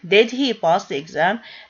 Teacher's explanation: he pass the exam this question becomes uh yes no question it just starts with the auxiliary did it has a rising intonation